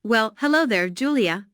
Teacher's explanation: notice the emphasis on hello